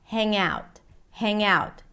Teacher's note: But the ng sound becomes the beginning of the word out.